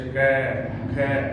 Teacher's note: जैसे कै बोलते हैं तो कंठ से आवाज आती है, कंठ के अंदर से घर्षण से